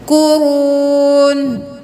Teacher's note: واو مدہ ہے ایک الف کے برابر کھینچے